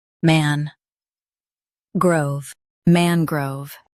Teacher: Emphasize man and keep grove smooth.